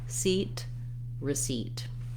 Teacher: What I want is that seat has a clear vowel and is stressed, and then my first syllable, receipt, is very short and reduced. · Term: reduced vowel